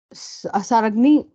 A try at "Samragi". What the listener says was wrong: Yeah, it's Samragi. Just the N is silent. Samragi.